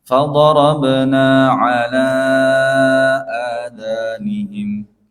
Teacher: bacaan panjangnya pada lafaz ala, itu juga 4 harakat. Jangan terlalu panjang.